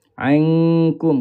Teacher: Pangkal lidah kita kena naik ke atas sentuh dengan lel langit atas. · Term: ikhfa hakiki